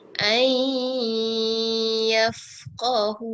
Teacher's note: Ai, dengar ai. Terus alif, terus dengar ya. Tak dengar nun.